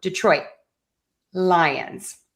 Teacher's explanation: I'm marking my T. I'm touching the tip of my tongue to the back of my top front teeth where the skin and the teeth meet on the roof of your mouth. I'm just not letting that puff of air go out. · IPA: /dɪˈtrɔɪt ˈlaɪənz/